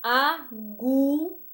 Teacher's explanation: quando repetimos a palavra agulha, vemos que a força do U, ela se estende. A repetição do U, ela se estende.